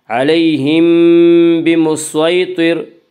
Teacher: صاد کو پر پڑھیں گے، صاد حروف مستعلیہ میں سے ہے۔ حروف مستعلیہ 7 ہیں جن کا مجموعہ خصہ ضغط قز ہے، جو ہمیشہ ہر حال میں پر پڑے جاتے ہیں۔